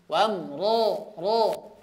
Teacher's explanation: Ro terbuka akan tapi bibirnya tidak maju. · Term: ro berharakat fathah tebal